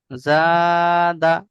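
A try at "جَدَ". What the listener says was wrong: দাল তো টান দেয়া যাবে না হারাকাত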